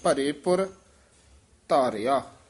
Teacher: ਭਰੇ ਪੁਰ ਇਕੱਠਾ ਹੀ ਪਾਠ ਬੋਲਣਾ ਭਰੇ ਪੁਰ ਨਹੀਂ ਕਹਿਣਾ ਭਰੇ ਪੁਰ ਧਾਰਿਆ ਅਪਨਾ ਕਾਰਜ ਆਪਿ ਸਵਾਰਿਆ